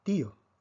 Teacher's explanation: tenemos una secuencia de una vocal cerrada con una vocal abierta y la fuerza cae sobre la vocal cerrada